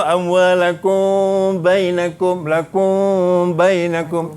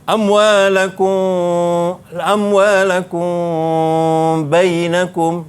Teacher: Okey, wala ta'kulu amwalakum bainakum ikhfa syafawi. Ikhfa syafawi ni kena dengung, dua harakat dan bibir atas bibir bawah dekat-dekat nak bersentuh, tak bersentuh. Agak-agak kita boleh letak selai kertas.